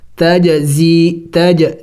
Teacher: جیم حروف قلقلہ میں سے ہے اور ساکن ہے تو اس پر قلقلہ کریں گے، قلقلہ کہتے ہیں لفظ کو ہلا کے پڑھنا